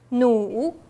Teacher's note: Remember, 努, it's third tone, so you should start from a lower tone